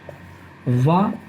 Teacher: रा और ला और शा का दंत से है, वा जो है दंतोष्ठ है, मतलब वा का उच्चारण दंत और ओष्ठ के माध्यम से होता है